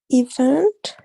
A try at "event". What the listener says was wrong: The stress is in the second part, event. Be careful because in the first part you pronounce the stress over here like event, but no, it's not going to be event, it's going to be event.